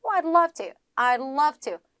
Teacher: D 사운드 거의 안 들려요